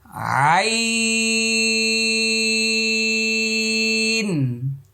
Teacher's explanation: তাহলে এটা হলো 2 নম্বর মাখরাজ, হলকের মধ্যখান থেকে। এই যে গলা, হলক, কণ্ঠনালী এর মধ্যখান থেকে 4 আলির পরিমাণ লম্বা হবে।